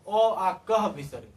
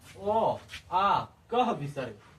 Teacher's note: क में पूरा परिवार ह और विसर्ग इन सभी का उच्चारण कंठ से होता है